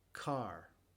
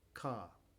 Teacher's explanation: Si la palabra termina en R o si la sílaba termina en R, no se pronuncia la R en el inglés británico.